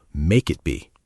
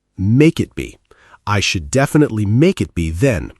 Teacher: It sounds like one single word when we speak fast.